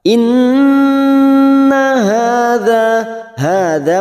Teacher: Innun yang bertasdid gunna musaddadah kita dengungkan dan ditahan selama 3 harokat. Inna hadza masing-masing 2 harokat.